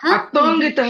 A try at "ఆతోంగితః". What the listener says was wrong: ఆకి దీర్ఘం ఉందా లేదా? ఉంది. అప్పుడు దాన్ని ఏమంటాము? ఆతోంగిత.